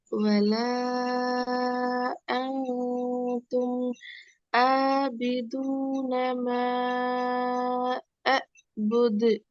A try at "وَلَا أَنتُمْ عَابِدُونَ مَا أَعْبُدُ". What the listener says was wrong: ரெண்டாவதுல எல்லா ஆயினும் பிழை. முதலாவது உச்சரிச்ச ஆயினுடைய பிளேஸ் இடம், ரெண்டாவது நீங்க உச்சரிக்கிற ஆயினுடைய இடமும் வேறுபடுது. அப்படியே இல்லை. ஆயினுங்கிறது ஒரு எழுத்து தான். அந்த ஒரு எழுத்து இதுலக்கு ஒரு இடம் தான் நீக்கணும். அந்த எழுத்தை உச்சரிக்கிறதுக்கான இடமா உருவாகும் எங்களோட தொண்டையில.